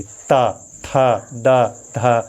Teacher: ता लाइन के 4 वर्ण का उच्चारण करते समय हमारी जिह्वा दांत से स्पर्श करती है और ध्वनि का निर्माण करती है, इसलिए ये क्या हो जाएगा, दंत व्यंजन हो जाएगा।